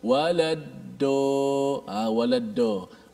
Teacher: Kerana dia hanya memfokuskan dad itu pada hujung lidah. Dia hanya letak hujung lidah saja di langit. Jadilah dia waladdo. Jangan sebut dad seperti ta. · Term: dal yang ditebalkan